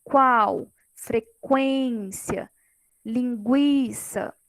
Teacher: o que eu escuto mais é a segunda vogal, né? Ou seja, aquilo que vem antes seria uma semivogal. Isso seria o ditongo crescente.